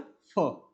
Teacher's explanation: तो फ का उच्चारण भी जो है वह किससे होता है? दंतोष्ठ से।